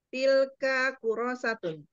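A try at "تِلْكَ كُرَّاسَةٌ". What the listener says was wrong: Kalau yang disetujui yang pertama tadi berarti kurang teliti. Mengapa? Karena tadi pertama kali membaca, roknya tidak bertasdid. roknya, ya, dua catatan kita di situ, yaitu dia bertasdid dan dia dibaca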